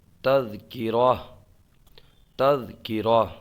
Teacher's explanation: اگر آپ وقف کریں گے تو یہ تذکراتن سے تذکرہ، تذکرہ اس کو پڑھیں گے